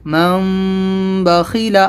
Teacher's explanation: یہاں پر غنہ اخفا دونوں ہوں گے، ناک میں آواز کو روکنا بھی اور تھوڑی سی چھپانا ہے۔